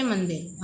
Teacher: अनुस्वार का उच्चारण करते समय हवा केवल नाक से निकलती है